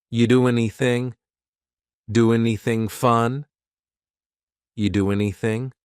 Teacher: We sometimes drop the a and we're going to push those two together because there's two n sounds by side.